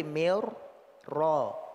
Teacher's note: Secara terucap ra-nya berubah menjadi dua, sehingga secara lafaz dia bertasydid. Ya. Walaupun secara tertulis dia juga ada tasydid, tapi nanti ada idgham yang dia tidak ada tanda tasydid secara tulisan.